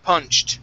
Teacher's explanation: The ED ending here. This will sound like a T.